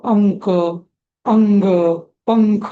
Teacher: समोर जर पुढे जर क ख ग घ आलं तर त्याचा उच्चार न होतो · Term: अनुस्वार